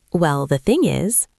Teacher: We often connect the words. Well the thing is it almost sounds like one long word.